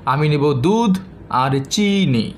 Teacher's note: এর মধ্যে দুটি শব্দ বা কিছু শব্দ আমি উচ্চগ্রামে উচ্চারণ করেছি, দুধ আর চি।